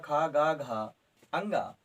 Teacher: हां उच्चारण स्थान कंठ है